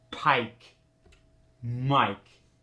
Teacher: drive into that long eye sound remember the monotone New York go down in Pitch at the end of the word